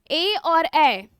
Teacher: कंठ तालव्य है, क्योंकि इसमें हम किसका प्रयोग कर रहे हैं, कंठ प्लस तालु का प्रयोग कर रहे हैं